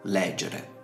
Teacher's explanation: perché la vocale della penultima sillaba in questo caso è breve e a questo punto l'accento retrocede alla sillaba precedente